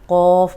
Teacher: قاف موٹا پڑھیں گے لیکن ہونٹ گول نہیں ہوں گے۔